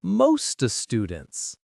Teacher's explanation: The T in most connects directly to the vowel in students. Instead of saying most of students slowly, it becomes mosta students. · The word of is reduced to the schwa sound, and almost disappears, so it becomes mosta. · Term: linking